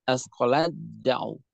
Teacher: Dalam kalimat asqalat da'u. Itu ta di sini masuk seluruhnya ke dalam dal. Dalam kasus ini sama dinamakan dengan idgham kamil karena tidak menyisakan sifat maupun zat seluruhnya masuk ke dalam huruf setelahnya.